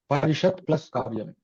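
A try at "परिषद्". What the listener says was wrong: త అంటున్నారా ద అంటున్నారా? పరిషద్ అవ్వాలి, అది పరిషద్ ప్లస్ కార్యం అవ్వాలి. చత్వ సంధి జరగాలి అంటే యాక్చువల్గా అక్కడ పరిషద్ అవ్వాలి అది. ఓకే, అప్పుడే అది ద ప్రకారంగా మారుతుంది. ఓకే, చర్త్వ సంధి.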